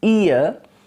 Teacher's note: in the diphthong ear at the beginning the lips are spread okay and then they are neutral at the end